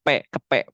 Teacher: Orang Indonesia itu lebih ke terlalu ditekan jadi makhrajnya itu terlalu ditekan sehingga menimbulkan bunyi lop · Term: siluman ba